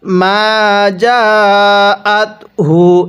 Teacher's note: মিমের মধ্যে এক আলিফ, জিমের মধ্যে চার আলিফ